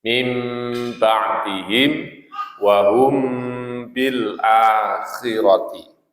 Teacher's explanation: Yang mim sukun bertemu ba ikhfa syafawi. Teori membacanya rata-rata tertutup.